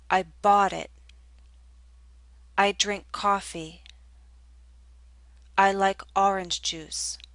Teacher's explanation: the lips are more rounded and the tongue is pushed backward more